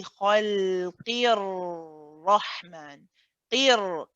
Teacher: the ra here is heavy. Even the joining ra is heavy. So when you say khalqir rahman, qir, that qi movement to the ra, qir, that first ra is also heavy.